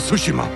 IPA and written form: ˈtsuʃiˌmɑː (Tsushima)